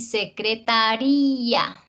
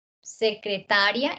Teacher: Secretaría es hiato, en cambio secretaria si hay un diptongo ahí y termina siendo grave